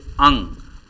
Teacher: अंग का उच्चारण नासिका से होने के कारण इसे अनुस्वार कहा जाता है। यह सघोष वर्ण है, इसके उच्चारण में स्वर तंत्रियों में कंपन होता है।